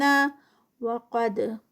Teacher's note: وقد قاف ہیوی دال کا کلکلا